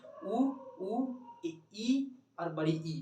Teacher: ऊ और बड़ी ऊ और ई और बड़ी ई का उच्चारण जब करिएगा तो मुंह आपका बंद हो जाता है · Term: मुंह बंद